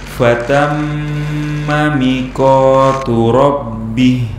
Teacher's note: mi dan ko panjang dua harokat